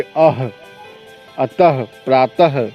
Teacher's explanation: इसके उच्चारण में कंठ से ह के समान स्वर निकलता है। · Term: विसर्ग